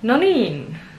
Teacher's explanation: The emphasis is on the second syllable.